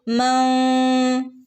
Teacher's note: മൻ എന്ന് വ്യക്തമാക്കി ഓതരുത് മം എന്നിങ്ങനെ ഓതണം ട്ടോ